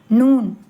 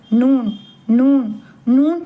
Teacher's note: நாக்கின் நுனி பகுதி முன் மேற்பற்களின் ஈரின் ஆரம்ப பகுதி லேசா தொட்டு குரல் மூக்கிலிருந்து வரவேண்டும். நூன் நூன் நூன் சொல்லும்போது மூக்கால பேசுற மாதிரிதான் லேசா இருக்கும்.